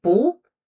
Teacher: Bu is followed by another fourth tone character. Bu changes to second tone.